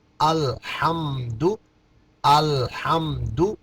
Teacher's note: لام میں آواز کو جنبش دینا نہیں ہے